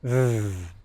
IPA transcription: ð